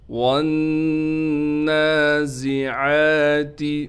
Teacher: واو کو ہم ڈائریکٹ نون سے ملائیں گے، نون پر تشدید ہونے کی وجہ سے غنہ بھی کیا جائے گا۔ غنہ کرنے کے ساتھ اس کے بعد ہم نے نون کو ایک الف کی مقدار کھینچنا بھی ہے۔